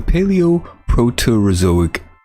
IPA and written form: pælioʊˌproʊtərəˈzoʊɪk- (Paleoproterozoic)